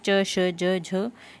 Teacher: च वर्ग को स्पर्श संघर्षी भी कहते हैं